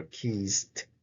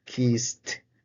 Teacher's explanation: The t sounds doesn't actually vibrate. So this is actually a voiceless consonant. So for that reason, the ed is not pronounced.